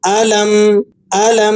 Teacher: میم ساکن پر وقف کریں گے تو غنے کے ساتھ ہلکے سے نون کی آواز بھی پیدا ہوگی